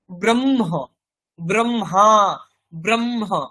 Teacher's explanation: প্রথমে কি শব্দ শোনা যাচ্ছে? মকার, তারপরে হকার আসছে